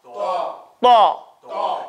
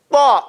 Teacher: Your tongue comes up. It hits the back part where the gums are, and it punches.